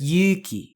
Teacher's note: the u sound the uh is long so it gets approximately twice as long of a pronunciation